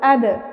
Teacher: বার উপর সাকিন অর্থাৎ কলকলা হরফের উপর সাকিন, আমরা কলকলার প্রতিধ্বনি করে পড়ব।